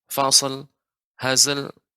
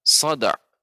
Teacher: Shad dan Zai ini bukan huruf qalqalah, sehingga tidak boleh langsung kita pantulkan fasl, hazl, tapi huruf dal, sada, ini boleh karena dal huruf qalqalah.